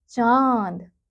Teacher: च जमा अ जमा द जमा अ यह क्या बन गया चांद यानी कि जो अ की मात्रा है उसके ऊपर चंद्रबिंदु का प्रयोग किया गया है तो ये क्या बन जाएगा चांद। तो इसका जो उच्चारण है वो बच्चों हम नाक और मुंह दोनों से करते हैं